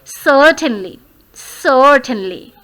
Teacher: Now you always place stress on sir, certainly.